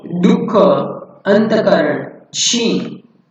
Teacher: विसर्ग कंठ वर्ण है जिसके उच्चारण में ह के उच्चारण को एक झटका सा देकर श्वास में मुंह से एकदम छोड़ देते हैं।